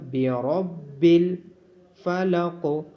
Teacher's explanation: را کو موٹا پڑھا جائے گا، برب الفلق. قوف کو موٹا بھی پڑھا جائے گا اور قوف پہ قلقلہ بھی کیا جائے گا